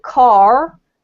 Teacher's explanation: If I pronounce it car, then it's North America, although there is more than one accent over there too, but they all tend to use the R sound.